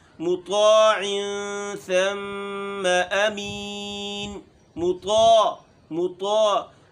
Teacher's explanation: مطاع میم باریک ہے، طا موٹی